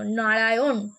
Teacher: এবং আরো যে ভিতর দিকে যেটা রয়েছে ওটাকে আমরা মূর্ধা বলি মূর্ধন্য উচ্চারণ করার সময় আমাদের জীব ভাঁজ হয়ে মূর্ধাকে স্পর্শ করছে